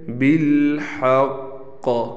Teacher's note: تشدید ہے، تھوڑا ٹھہراؤ رکھ کر قلقلہ کیا جائے گا